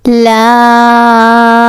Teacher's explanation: originate from tongue Edge touching the gums